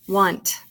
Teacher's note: The A sounds like a short U, not the N.